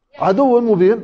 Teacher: الواو والياء المشددات يكون فيها نبر فقط، الواو والياء المشددات في حال الوصل لا يكون إلا في الواو والياء فقط، فيش أي حرف ثاني.